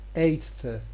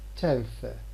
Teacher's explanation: an alveolar sound becomes plus dental in the context where it is found before a plus dental sound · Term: dentalization